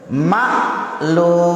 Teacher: ucapannya ujungnya ini ya dipanjangkan, bisa 4 bisa 6, namanya mat arid lisukuri